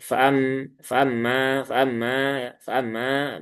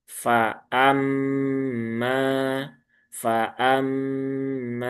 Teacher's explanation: Fnya satu harakat, hamzahnya satu harakat. Nah, kemudian mimnya ditunaikan ghunahnya ya ditahan tiga harakat. Setelah itu panjangkan karena di sini ada alif setelah fathah.